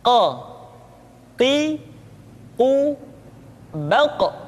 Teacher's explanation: Diucapkan dengan suara yang tebal dan dalam posisi sukun, maka terdengar pantulan suara. · Huruf qaf diucapkan dengan cara menyentuhkan pangkal lidah kita dengan langit-langit bagian belakang.